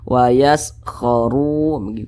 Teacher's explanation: Nah, kemudian ru dibaca tebal. Huruf ro-nya ini dibaca tebal karena dia memiliki tanda baca dhammah, sehingga pangkal lisan kita naik terangkat ke atas ketika kita mengucapkannya, jadi ditebalkan.